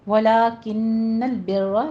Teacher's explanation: یہاں پہ آپ نے نون مشدد ہے، غنہ واجبہ کرنا ہے. بر میں وہی را مفخم پڑھی جائے گی.